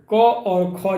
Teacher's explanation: क और ख जो है ये आपका कंठ से उच्चारण होने वाली ध्वनियाँ हैं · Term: कंठ ध्वनियाँ